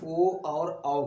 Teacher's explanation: ये दोनों ओ आओ मतलब ये कंठ और ओष्ठ दोनों से निकलते हैं